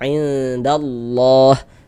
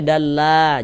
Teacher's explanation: Maka lafaz allahnya dibaca tebal dibaca tabkhim. Huruf lam jalalahnya tuh ya huruf lam yang di tengahnya nih lamnya lafaz Allah nih kita baca tebal kita baca tapkhim sehingga kita baca indallah.